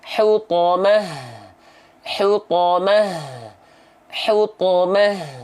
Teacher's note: kalau ta marbutoh dia dibaca ketika stopnya jadi H besar ketika dia enggak berhenti pada huruf ta marbutah dibaca terus menjadi